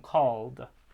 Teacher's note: the l and call is voiced so the d stays voiced